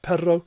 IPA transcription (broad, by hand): pero